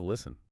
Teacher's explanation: Middle English speakers naturally dropped the T because it was physically difficult to pronounce when stuck directly between an S and an N